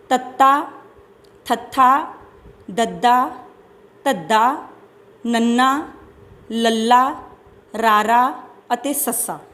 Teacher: ਦੰਤੀ ਵਿਅੰਜਨ ਧੁਨੀਆਂ ਉਹ ਵਿਅੰਜਨ ਧੁਨੀਆਂ ਹੁੰਦੀਆਂ ਨੇ ਜਿਨ੍ਹਾਂ ਦੇ ਉਚਾਰਨ ਸਮੇਂ ਜੀਭ ਜਿਹੜੀ ਆ ਉਹ ਦੰਦਾਂ ਦੇ ਅੰਦਰਲੇ ਪਾਸੇ ਨੂੰ ਛੂੰਹਦੀ ਹੈ। ਇਹਦੇ ਵਿੱਚ ਸਾਡੇ ਕੋਲ ਆਉਂਦੀਆਂ ਨੇ ਤੱਤਾ, ਥੱਥਾ, ਦੱਦਾ, ਧੱਦਾ, ਨੰਨਾ, ਲੱਲਾ, ਰਾਰਾ ਅਤੇ ਸੱਸਾ।